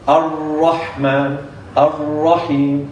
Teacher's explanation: And takrar is vibration. But it's not a haqiqi takrar. This takrar is like a vibration. Ar-Rahman, Ar-Rahim, not Ar.